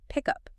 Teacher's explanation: The K sound at the end of pick moves over to up. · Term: blending